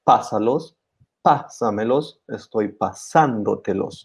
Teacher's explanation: we always stress that sa syllable. And that's why we use the stress mark.